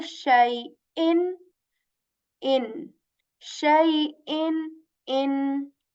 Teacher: I am not hiding the sound of Noon Sakin in this Tanween because there is Hamza afterwards. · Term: Izhar-e Halki